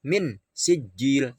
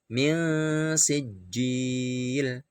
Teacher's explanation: Contoh, min sijil ya, min ya, ketika kita membunyikan huruf nun mati sudah mengira-ngirakan bunyi sin. Jadi min sijil samar, ada dengungnya 2 ketuk. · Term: ikhfa